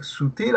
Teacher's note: En la palabra sutil está bien, la sílaba tónica es til